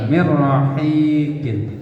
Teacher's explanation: Suara tasdid tapi tidak dengan dengung. Itu nun sukun bertemu dengan ro. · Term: idgham bila gunnah